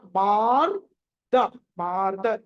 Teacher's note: మాకి దీర్ఘం ఉంది ఆ తర్వాత సగం రకారం ఉంది